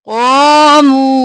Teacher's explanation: कौफ मोटा और मुंह खींच के वक़्फ़ कर देंगे